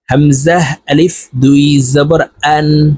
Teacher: হামজা হলকের শুরু থেকে উচ্চারণ হবে